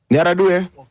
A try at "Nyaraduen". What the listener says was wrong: it's Nyaraduen. Please pronounce that last N.